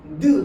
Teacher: 혀 끝이 윗 잇몸 뒤쪽에 닿았다 떼잖아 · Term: 잇몸 소리